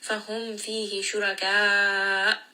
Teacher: we end here on a hamza. We are going to give it nabar and give it jahr, meaning that sound is abruptly going to stop as it comes out of the throat to emphasize that hamza there.